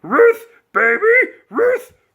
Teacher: very high pitched and very guttural